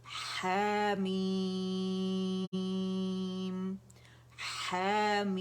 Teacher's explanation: 6 count کھینچیں گے. یہ letter اس کو 6 کاؤنٹ کھینچ رہا ہے, اور پھر ہم میم ساکن پہ آئیں گے